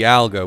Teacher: with the stress in the middle